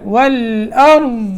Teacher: یہاں ضاد کے اوپر جب وقف کریں گے تو ضاد پڑھا جائے گا، اس میں قلقلہ نہیں ہوگا